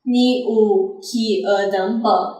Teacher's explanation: there is no rising intonation to indicate that it is a question, and the intonation of Quanzhou dialect is level